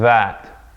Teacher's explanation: The difference is that for the dhaal, you're using your vocal cords on that sound. It's like the difference between S and Z.